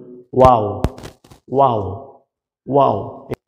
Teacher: দুই ঠোঁট গোল করিয়া সামান্য খোলা রাখিয়া ওয়াও। দুই ঠোঁট গোল করিয়া সামান্য ফাঁকা রাখিয়ে ওয়াও, মানে একেবারে মিলাই দেওয়া যাবে না, গোল করে সামান্য ফাঁকা রাখতে হবে এবং গোল করতে হবে, তারপর ওয়াও ওয়াও।